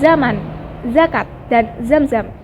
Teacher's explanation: menempatkan ujung lidah pada gusi gigi atas lalu udara dihembuskan keluar secara bergeser fonem ini direalisasikan sebagai bunyi Z Villa sebagai omset pada sebuah